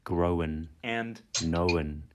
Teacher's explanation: past participles like grown and known are sometimes pronounced as growin and knowin with a vowel inserted that probably developed by analogy with other past participles like written